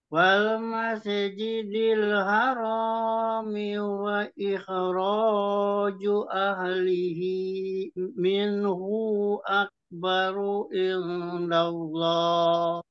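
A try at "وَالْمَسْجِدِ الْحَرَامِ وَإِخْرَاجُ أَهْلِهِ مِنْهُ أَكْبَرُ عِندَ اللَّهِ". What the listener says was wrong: Terus di mas itu masih tawalut sedikit ya. Terus minhu, hu ini nggak ada panjangnya, nggak ada matnya. Di sini tadi dipanjangkan.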